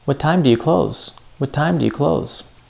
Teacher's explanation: Time, close. We said those louder and longer. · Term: stress